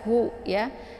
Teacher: Keluar posisi makharijul hurufnya itu di tenggorokan bagian bawah sejajar dengan hamzah ya. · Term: ha besar